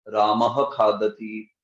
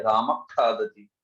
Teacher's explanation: अर्ध विसर्ग में राम खादति इतना क्विक होता है वो और अगले वाले के साथ जुड़ जाता है, इसलिए उसको आधा विसर्ग ही बोल दे, अर्ध विसर्ग।